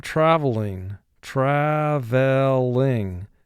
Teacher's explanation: the emphasis in travel goes to the first syllable, not the second syllable